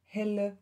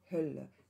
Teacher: Also eine relativ große Gruppe von Lautumgebungen sind dafür verantwortlich, dass hier das E zu Ö gerundet bzw. labialisiert wird